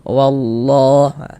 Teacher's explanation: Tapi kita baca wallah ditebalkan lafaz Allahnya. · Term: tafkhim